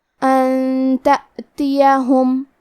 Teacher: تا حروف الاخفاء میں سے ہے اور اخفاء کا معنی ہے چھپا دینا، تو ہم نون ساکن کو چھپاتے ہوئے اور غنہ کے ساتھ یہ حکم کو ادا کریں گے